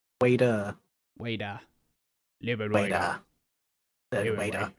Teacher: the intrusive R, where even in words that don't have an R, it sort of just appears there.